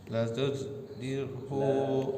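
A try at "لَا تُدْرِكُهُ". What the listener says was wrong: La-nya panjang.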